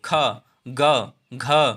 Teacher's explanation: का बोलेंगे तो का कहाँ से आवाज निकली? कंठ से। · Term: कंठस्थ व्यंजन